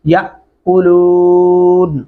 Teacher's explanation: یہاں پہ بھی بہت زیادہ لوگ غلطی کرتے ہیں، اس کو یاکلون پڑھ جاتے ہیں، الف کے اوپر جب بھی جزم آتی ہے وہ حمزہ کی آواز میں پڑھا جاتا ہے جھٹکے سے